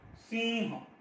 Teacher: महाप्राणाचा उच्चार स्वतंत्र असतो आणि इकडे जो अनुस्वाराचा जो भाग असतो त्या पहिल्याच अक्षरावर येत असतो.